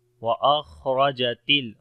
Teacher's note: خا کے اندر صفت ہمس ہوگی، موٹا بھی پڑھیں گے